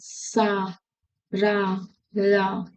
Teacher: दांतों के मूल से बनते हैं ये सा रा ला